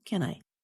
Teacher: The two small words can I sound like one word with two syllables